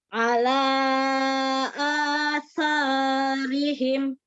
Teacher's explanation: Ujung lidahnya dikeluarkan. Ujung lidah bertemu dengan ujung gigi seri atas. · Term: huruf sa